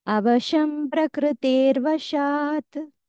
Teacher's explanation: విసర్గా వెళ్ళిపోతే రకారం వస్తుంది